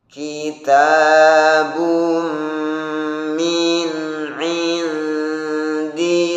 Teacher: Tahan 2 harokat, dengungan dhammah ten bertemu mim, idgham bi gunnah dengan mendengungkan pada hidung 2 harokat. Kafnya dan taknya juga perhatikan sifat hamsnya.